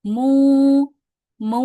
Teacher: huruf mim berharakat dommahnya jadi dibaca panjang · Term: huruf mad